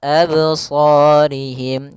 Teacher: pada lafal qalqalah ini tidak boleh ada hamzah tambahan